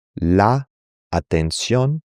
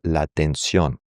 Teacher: when one word ends in a vowel in Spanish and the next word starts with the same vowel, those words are going to be pronounced together.